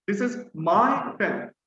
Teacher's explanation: this is my opinion right i say this is my pen so i'm putting stress on my